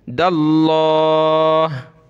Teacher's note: लफ्ज़ अल्लाह से पहले दाल पर ज़बर है तो मोटा करेंगे